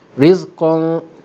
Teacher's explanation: dengung di sini bunyinya tebal kerana ikhfa di sini berlaku ke atas huruf isti'la, huruf yang tebal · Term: ikhfa hakiki